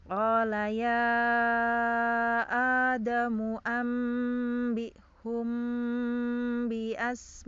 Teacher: Nah, asmaihim ya, karena di sini garis miring 2-nya di depan, maka ya-nya di sini dibaca 6, ma-nya juga dibaca 6. Maka kita baca 6 ya. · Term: 6 harokat